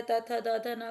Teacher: दंते कहलाते हैं क्योंकि इनका उच्चारण द दांतों से किया जाता है